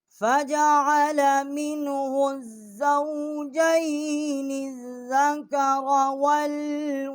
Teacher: منہ جو ہا ہے یہ حروف حلقی ہے، اقصاء حلق سے اس کا مخرج نکالا ہے